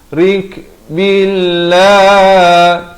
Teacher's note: Sekali lagi lafaz jalalah dibaca nipis 2 harakat.